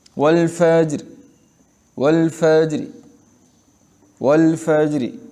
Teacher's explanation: آدھا حرف ادا کرنا، نہیں آدھا حرکت ادا کرنا، پیش اس کو آدھا ادا کریں آدھا چھوڑ دیں، زیر اس کو آدھا ادا کریں آدھا چھوڑ دیں، اس کو روم کہتے ہیں